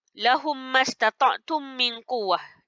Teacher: Memasukkan bunyi mim ke dalam mim yang berbaris. Serentak dengung. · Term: idgham mislaini